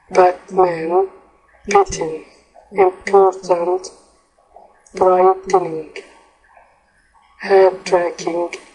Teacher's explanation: we don't really pronounce the T in the words Batman bitten important brightening hat rack threatened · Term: the flap